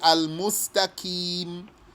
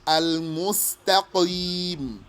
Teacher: So don't pronounce it as a K. Don't say al-mustaqim. No. It's thicker than that. Al-mustaqim. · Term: Qaf